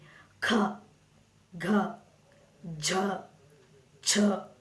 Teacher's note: ಎನ್ನುತ್ತೇವೆ ಸೋ ಕ ಛ ಟ ಥ ಇವುಕ್ಕೆಲ್ಲ ಜಾಸ್ತಿ ಉಸಿರು ನಾವು ಕೊಡಲ್ಲ ಮಹಾಪ್ರಾಣಗಳು ಏನಂದ್ರೆ ಸ್ವಲ್ಪ ಜಾಸ್ತಿ ಉಸಿರು ಕೊಟ್ಟು ಅದನ್ನ ಹೇಳ್ತಿವಿ ಖ ಘ ಝ ಛ ಈ ತರ ಉಚ್ಚಾರಣೆ ಡಿಫರೆಂಟ್ ಆಗ್ತಾ ಹೋಗುತ್ತೆ ಎರಡಕ್ಕೂ